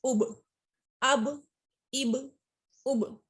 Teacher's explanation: اب دیکھیے تو با میں ایک جنبش ہو رہی ہے، اس کے بعد پلٹ کے آ رہی ہے، اس کو کہتے ہیں قلقلہ کرنا، اور یہ تبھی ہوتا ہے جب یہ با اور اس کے ساتھ اور جو دوسرے قلقلہ لیٹرز ہیں وہ ساکن ہوتے ہیں۔